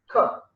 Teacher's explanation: There is no vibration. It is voiceless, and place is velar.